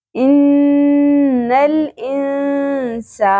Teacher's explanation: حمزہ زیر نون یہاں پہ اخفا کرنا ہے، کیونکہ آگے حروف اخفا میں سے سین آ رہا ہے، تو یہاں پہ ہم نون کی آواز کو چھپا لیں گے اور غنہ بھی کریں گے، اخفا مع الغنہ